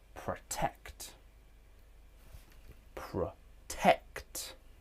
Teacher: The second syllable is stressed. It has primary stress. And because there is no secondary stress, we can just say the second syllable is stressed.